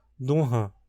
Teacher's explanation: Segundo o que vimos com a rinoglotofilia, isso poderia evoluir para algo como duhan ana, nas proximidade de um h, essa nazalização poderia se espalhar para outras vogais a palavra, criando algo como dunhan.